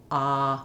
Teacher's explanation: My tongue is all the way down, my lips have no rounding, and as this is a back vowel, I have space all throughout my mouth, ah, when I'm saying the vowel. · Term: ah vowel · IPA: /ɑ/